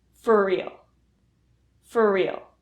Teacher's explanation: For real reduces so that the R sound in for and the R sound in real combine into one R sound.